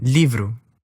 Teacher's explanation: an l pronounced with only the front of your tongue